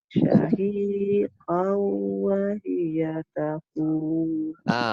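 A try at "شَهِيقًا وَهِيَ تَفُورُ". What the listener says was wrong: Yang syahiqaw tu dia memasukkan beserta dengung.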